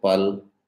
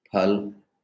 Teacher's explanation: in Hindi, unaspirated pa or p and aspirated ph